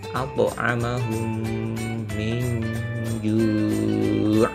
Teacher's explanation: Ini dia, ada bacaan qalqalahnya. At'amahum, ada pantulan at'u, tidak hanya at'amahum, tapi harus dibaca memantul